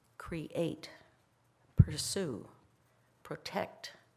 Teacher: The stress is on the second syllable, ba-bum, ba-bum, ba-bum.